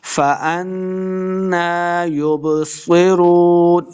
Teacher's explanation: با حروف قلقلہ سے ہے، ساکن ہے، اس کو خوب واضح کرنا ہے